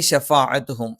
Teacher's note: ഫ മേലെ മുൻപല്ലിൻ്റെ താഴ്ഭാഗം താഴെ ചുണ്ടിൻ്റെ പള്ളയിലാണ്. ഐൻ തൊണ്ടയുടെ മധ്യഭാഗമാണ്.